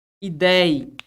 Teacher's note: Quando eu falo para você a palavra ideia, perceba que a palavra ideia, ela é composta, olha onde é que está a sílaba tônica, tá no ei